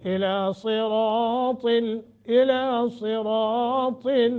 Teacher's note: صاد را طا تینوں موٹے